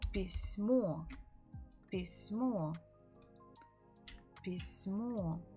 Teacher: The stress falls on the final syllable.